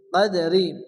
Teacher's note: নরম আওয়াজে তাড়াতাড়ি পড়তে হবে লাইলাতুল কাদারি দালের উপরে জজম আসছে দালের অক্ষর হালকা ধাক্কা দিয়ে পড়তে হবে